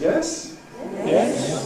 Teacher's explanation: starts in the middle and goes high. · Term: high rise